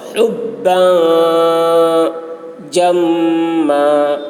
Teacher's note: با میں تنوین ہے، یہاں پر اخفا ہوگا